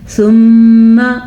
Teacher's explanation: یہاں پہ میم کے اوپر شد ہے تو ہم یہاں پہ غنہ کریں گے